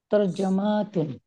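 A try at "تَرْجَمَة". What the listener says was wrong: টান হবে না। তরজামা,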